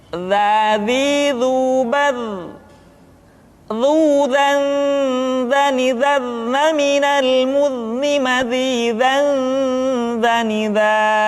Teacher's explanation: Diucapkan dengan menyentuhkan ujung lidah dengan dinding dua gigi seri bagian atas seperti kita mengucapkan huruf tha. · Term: huruf za